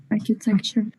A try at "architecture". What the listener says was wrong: El acento va acá. Architecture. No, que architecto, no es archi. O sea, todas las CHs que vienen del griego suenan K. O sea, esta palabra viene del griego, entonces, ¿cómo va a sonar?